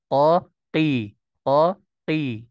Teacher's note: mah ya Iya itu huruf q tidak boleh merekat maksudnya karena huruf q itu tidak punya sifat idbak sehingga dia biasa saja terangkat pangkalnya tapi tanpa kita rekatkan